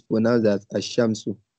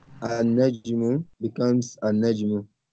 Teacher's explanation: When al is prefixed to a noun beginning with a solar letter, the lam of al is assimilated to the solar letter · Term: assimilation